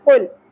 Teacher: لام ساکن پہ قلقلہ نہیں کرنا